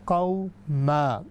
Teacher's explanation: پھر اس کے بعد جو ہے ہماری آتی ہے مد عوض، ایک اس کی بھی قسم ہے، وہ ہے لا تجدو قوما، یعنی دو جب زبریں آئیں گی، دو فتح آئیں گی، تو ہم جب بھی ان پر روکیں گے تو ہم اس کو کہیں گے قوما